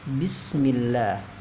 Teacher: Bismillah, di sini ada kalimat Allah, yaitu termasuk ke dalam hukum lam, lafzul jalalah, yaitu dibaca tarqiq tipis. Bismillah, kadar panjang bacaannya yaitu 2 harokat.